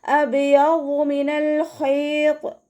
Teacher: വാദ് ഇസ്തിഅലാൻ്റെയും ഇത്ബാക്കിൻ്റെയും ലെറ്ററാണ്. അപ്പോൾ നാവിൻ്റെ മുഴുവൻ ഭാഗങ്ങളും മുകളിലേക്ക് ഉയർത്തിയിട്ട് തഫ്ഹീം ചെയ്യുക